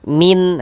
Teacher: Karena di sini yang kita temui nun sukun, maka nun sukunnya kita baca jelas. · Kemudian tidak didengungkan, tidak dighunahkan, maka dibaca pendek saja.